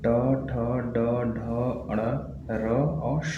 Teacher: एक होता है मूर्धन्य व्यंजन। मतलब जब हम किसी वर्ण का उच्चारण करते हैं तो जो हमारा जीभ होता है वो मुड़ जाता है।